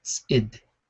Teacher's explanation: The next sound is tzid. Is a T glottal and an I, and then a D.